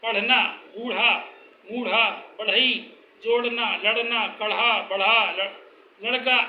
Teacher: इन ध्वनियों को उच्चारण करने के लिए मूर्धा से रगड़कर ध्वनि उत्पन्न की जाती है, जबकि शुद्ध मूर्धन्य में जीभ की मूर्धा से केवल स्पर्श किया जाता है।